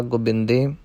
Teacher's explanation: ਇਸ ਦਾ ਉਚਾਰਨ ਗੁਰਮੁਖ ਜਨਾਂ ਨੇ, ਉਸਤਾਦ ਜਨਾਂ ਨੇ ਇਹੋ ਹੀ ਕੱਢਿਆ ਹੈ ਕਿ ਨਾ ਤਾਂ ਹੋੜੇ ਜਿੰਨੀ ਲੰਬੀ ਆਵਾਜ਼ ਹੋਵੇ ਅਤੇ ਨਾ ਔਂਕੜ ਜਿੰਨੀ ਛੋਟੀ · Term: 2 ਮਾਤਰੇ ਪਾਠ